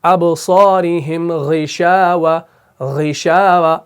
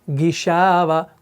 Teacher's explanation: غین کے نیچے یہاں پر زیر ہے, لیکن پھر بھی ہم اس کو موٹا پڑھ رہے ہیں